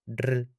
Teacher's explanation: Escucha el golpe alveolar simple, r, breve, anterior.